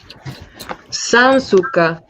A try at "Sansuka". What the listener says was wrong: Sansuka. Well done.